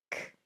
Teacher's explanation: It's hard with the tongue kicking off against the back of the throat. K, and it's only air, by the way.